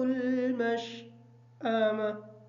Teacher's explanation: مشأمہ کی جو شین ہے اس شین کو کلیئر کریں گے، حمزہ کو کلیئر کر کے پڑھیں گے، تا حالت وقف کی وجہ سے ساکن ہوگی۔